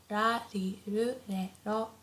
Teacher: the R sound is not as harsh as in English, so it's not like R, not like R, but it's very soft in between L and R. So like ra, ri, ru, re, ro.